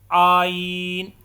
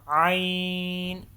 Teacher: یہ حلق کے مڈ والے حصے سے ادا ہوتا ہے